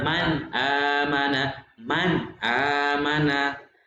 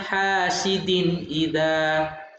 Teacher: apabila nun mati ini anakku ya bertemu dengan hamzah, itu bacaannya harus jelas